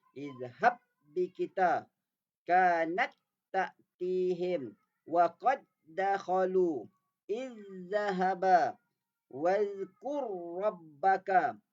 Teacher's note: idgham bila gunnah, memasukkan dua huruf yang sama tanpa dengung